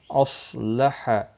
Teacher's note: صاد مستعلیہ ہے، پر پڑھا جائے گا